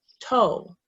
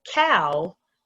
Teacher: Whereas if you did a word like cow, which is two sounds, there's a tiny mouth movement that might make you think that O and W are two separate sounds. But we don't say ka-aw, we say cow. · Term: diphthong